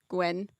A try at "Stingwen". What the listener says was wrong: No, you don't pronounce the G.